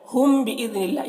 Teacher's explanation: میم ساکن کے بعد با ہے تو اخفاء شفوی ہوگا، اسے غنہ اور اخفاء کے ساتھ پڑھتے ہیں۔